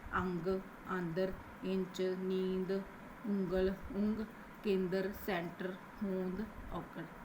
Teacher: ਨਾਸਕੀ ਸਵਰਾਂ ਦੇ ਉਚਾਰਨ ਸਮੇਂ ਸਾਹ ਦੀ ਹਵਾ ਮੂੰਹ ਤੋਂ ਬਿਨਾਂ ਨੱਕ ਵਿੱਚੋਂ ਹੀ ਬਾਹਰ ਆਉਂਦੀ ਹੈ